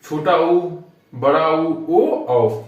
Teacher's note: वृत्तमुखी मतलब बोलने के बाद हमारा मुंह वृत्त के समान हो जाए।